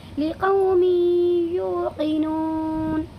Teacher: ٹھیک ہے، یہاں پر بھی دو زیر کی تنوین کے بعد یہ یا آیا ہوا ہے، اسی لیے اس میں ادغام ناقص ہوگا اور کیا کریں گے، یعنی اس دو زیر کی تنوین کی آواز کو یا میں بدل دیں گے اور تھوڑا غنہ کے ساتھ ناک میں لے جا کر کے پڑھیں گے